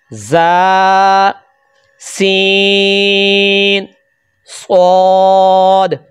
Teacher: हरूफ सफीरिया वो हरूफ है जिनकी आवाज सीटी जैसी तेज आती है। · हरूफ सफीरिया जुबान की नोक और दोनों दांतों के अंदरूनी किनारे से इनको अदा किया जाता है।